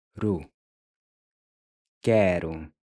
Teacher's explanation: to pronounce the r, your tongue just barely taps the gummy ridge right above your front teeth.